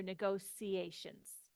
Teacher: in British English you might hear negotiations this t i turns into a s sometimes in North American English we say negotiations negotiations were difficult and